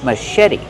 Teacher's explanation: The CH makes the soft sh sound like shoe. Machete. Put the stress on the second syllable and make the vowel like red in bed.